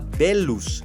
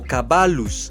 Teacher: La doble L se pronuncia como una L geminada, es decir, como una prolongación del sonido L